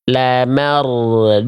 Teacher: agak condong ke D karena terlalu dalam jadinya kayak tebal